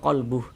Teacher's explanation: Kalau kita berhenti tepat di mad silah, maka tanda panjangnya tidak berlaku.